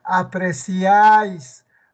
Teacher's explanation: la vocal abierta que está al centro debe ser tónica la vocal que está al centro la abierta debe pronunciarse con más fuerza ejemplo apreciáis vocal cerrada la i por cada abierta la hay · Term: triptongo